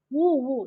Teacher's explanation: இதழ்களை குவிப்பதால் பிறக்கும் எழுத்துக்கள் உ சொல்லி பாத்தீங்கனாலே தெரியும் இதல்களை குவிப்பதால் உதான் பிறக்கும். ஆயுத எழுத்து பிறக்கும் · இதழ்களை குவிப்பதால் பிறக்கும் எழுத்துகள்